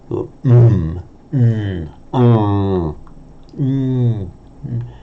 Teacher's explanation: So there no air is coming out of the mouth. The air is coming out of the nose only. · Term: nasals